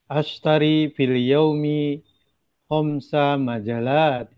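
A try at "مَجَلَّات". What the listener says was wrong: Namanya tashdid. Majallat.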